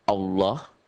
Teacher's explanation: lafal Allah ini dibaca tebel berbunyi oh